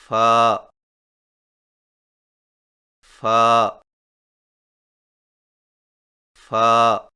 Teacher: فا کی ادائیگی میں زیادہ سانس نہ نکالیں، یعنی فا فا فا، اور یہ درست نہیں۔